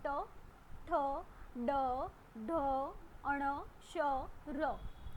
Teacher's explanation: તો જેમાં જીભ તમારી સહેજ ટર્ન લે છે, વળે છે અને પછી શબ્દ નીકળે છે. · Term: મૂર્ધન્ય